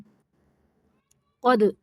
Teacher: دال کو قلقلہ کرنا ہے، قاف کو موٹا پڑھنا ہے